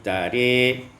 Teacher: Pada ayat 50, tara, imalatu fathatir ra, imalah fathah ra menjadi tari